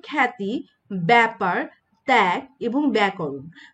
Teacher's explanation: জফলা যুক্ত ব্যঞ্জনের সঙ্গে আকার বা আ ধ্বনির উচ্চারণ প্রায় ক্ষেত্রে কি হয়? অ্যা হয়। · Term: অ্যা উচ্চারণ